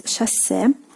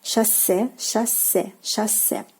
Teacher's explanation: the stress falls on the last syllable